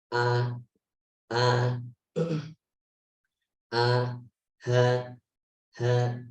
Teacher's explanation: tenggorokan yang paling jauh, aqsal halqi, itu ada hamzah sama ha